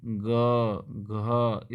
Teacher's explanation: ग घ इसमें जो है थोड़ा सा आप देखें तो आपको जो है कंपन पैदा होगी, आप हल्का सा जो है अपना कंठ को छू करके जो है आप इनको महसूस कर सकते हैं। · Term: घोष